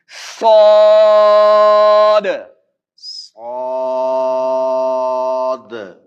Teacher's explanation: اور صاد اس میں سیٹی بھی ہو اور اس کو پر بھی پڑھا جائے. ٹھیک ہے، یہ حروف مستعلیہ میں سے بھی ہے، اور حروف مستعلیہ جو ہے وہ ہر صورت پر پڑھے جائیں گے.